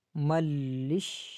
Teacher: میم کو ڈائریکٹ لام کے ساتھ ملائیں گے